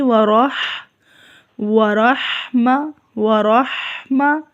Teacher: رے کو زیر کی طرف مائل نہیں کرنا، زبر ہی رکھنی ہے اس پہ اور را پر ہوگی، موٹی پڑی جائے گی